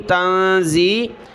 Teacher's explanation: نون ساکن کلرفل ہے ناک میں آواز پیدا ہوگی